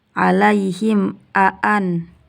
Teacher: Kemudian di bagian alaihim a'anzar, hukumnya izhar syafawi karena mim sukun bertemu dengan alif jadi dibaca jelas